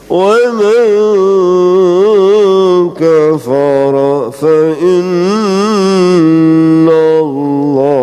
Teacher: samar ya, ikhfa, nun matinya itu nggak jelas nunnya